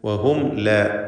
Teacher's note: വഹും ലാ സാക്കിൻ തമീം ശേഷം ലാമ് ഇൽഹാർ ഷഫവി നൽകി മണിക്കാതെ മീമിനെ ഉച്ചരിക്കുക